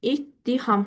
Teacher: Yəni ikinci t samiti tələffüz zamanı d səsi kimi tələffüz olunur.